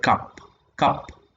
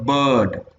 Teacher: so actually ah is a central vowel